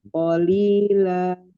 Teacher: Ya, fathah tanwinnya dibaca fathah 2 harokat. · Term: Mad iwad